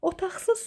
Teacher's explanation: Otaqsız sözündə özündən sonra samit gəldiyi üçün X kimi tələffüz olunur.